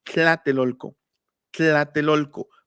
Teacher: dejamos fija la lengua y con los lados de la lengua decimos tla, y los españoles lo transcribieron como TL. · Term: lateral aproximante palatal